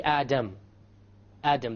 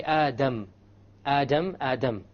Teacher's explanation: the English D only uses the tip